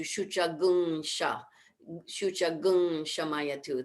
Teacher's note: because it's followed by a sibilant sound there's a rule in vedic chanting that the shucham has to change change to shucha gung sha shucha gum shamayatu that's just how